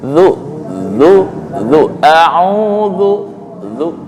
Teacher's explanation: Gigi nih yang depan atas nih, dengan lidah. Zu dicepit. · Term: zal